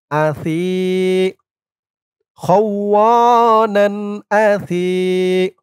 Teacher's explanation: সার উচ্চারণটা একদম নরম হবে জিহ্বার মাথা উপরের দাঁতের মাথার সাথে লাগবে